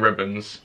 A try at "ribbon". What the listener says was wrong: No. Ribbon. You said ribbons. Not the same.